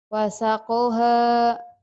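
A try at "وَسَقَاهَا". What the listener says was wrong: Kolnya panjang. Hanya panjang. Wasako. Wasakoha.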